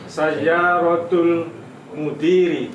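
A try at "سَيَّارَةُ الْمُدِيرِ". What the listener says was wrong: Sayyaratul mudiri. Ahsan.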